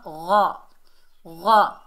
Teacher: غین جو ہے فل mouth letter ہے، حروف استعلا میں سے موٹا ادا ہوگا